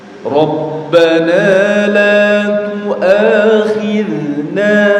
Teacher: kalau antum baca huruf dzal sukun jamaah ini dialirkan ya, jangan dipantulkan. Jadi banyak sekali yang baca dzal sukun la tuakhidna khidna enggak la tuakhid khid ya.